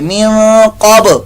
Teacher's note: با ساکن کے اندر قلقلہ بھی ہو رہا ہے